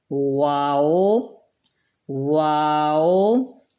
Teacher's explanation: یہ واؤ جو ہے دونوں ہونٹوں کی گولائی سے ہی ادا ہوتا ہے، اور 2 دفعہ ہونٹوں کے گول ہوتا ہے، کیونکہ اس کے